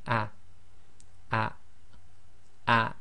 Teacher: So this will just be a, a, a. It's sort of almost half the length of a normal fatha.